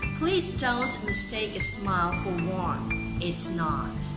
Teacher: The sample that I just read to you is called an iambic pentameter. So that means there are 5 iambs in that line. In each line, 5 iambs.